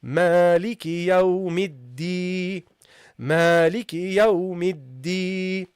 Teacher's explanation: we don't have only kasra here, but we got also the ya. So this means we have to also prolong it.